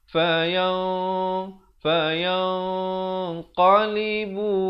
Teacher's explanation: ikhfa di sini dibaca tebal kerana qaf merupakan huruf isti'la.